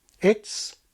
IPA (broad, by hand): ɪts